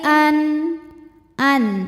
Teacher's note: maka Nun sukun ini kita bunyikan dengan jelas jadi kalau asalnya bunyi nun sukun itu n ya maka ini tetap n tidak berubah ya dan tidak kita tahan an aqu qu hukumnya adalah Mad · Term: izhar halqi